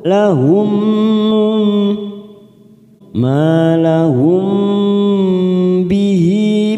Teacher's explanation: Ma fathah diikuti alif 2 harokat. Lahum mim sukun bertemu ba, biasanya mim sukun ini kita baca jelas, sekarang kita baca mendengung siap masuk pada huruf depannya yaitu huruf ba, namanya bacaan ikfa safawi, kita tekan 3 ketuk siap masuk pada huruf ba.